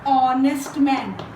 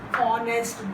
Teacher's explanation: Now this word is pronounced as honest, though the word is beginning with H, but the initial sound is O, honest man, and O is one of the vowels.